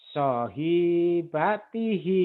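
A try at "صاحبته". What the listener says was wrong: So-nya panjang.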